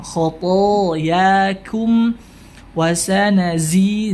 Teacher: zai memiliki sifat sofir, tajam suaranya.